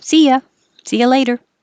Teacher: So the T changes to a D.